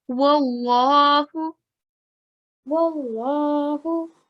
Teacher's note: This is Lamul Jalala, and before is al-Fatah. We'll read it thickly.